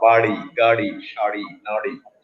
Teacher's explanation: আর আরেকটা হচ্ছে র, র, যেটা হচ্ছে আবার জিহ্বা উল্টে উপরের তালুর মাঝখান থেকে মূর্ধন্য